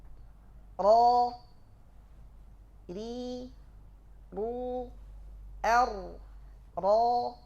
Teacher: ada sifat tikrar, ada getaran, tapi tidak digetarkan mubalaghah. Getaran ini harus dihindari.